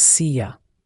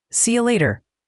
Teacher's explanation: This is another great example of U reducing to yah. So, see you becomes seea and later.